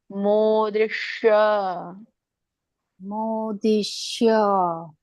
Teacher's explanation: ಅಂಗಳಕ್ಕೆ ನಿಮ್ಮ ಮೇಲಿನ ಭಾಗ ಇದೆ ಮಾತಾಜಿ ಅಲ್ಲಿ ನಾಲಿಗೆ ಹತ್ತಿಬೇಕು ಅವಾಗ ಶ ಉಚ್ಚಾರಣೆ ಬರುತ್ತೆ ಮೋದೃಶ ಮೋದಿಶ >> ಇಲ್ಲ ನೀವು ಅದು ಮುಂದಿನ ಅಂಗಳಕೆ ಹಸ್ತಾ ಇದ್ದೀರಾ >>